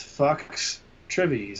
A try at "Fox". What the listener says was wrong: What did you call me? The first part. I believe you mispronounced Fox a little bit there. A little emphasis on the O.